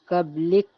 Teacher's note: کاف میں ہلکا سا ہمس پیدا کریں گے